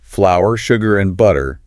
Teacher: there's a slight pause and stress on each item.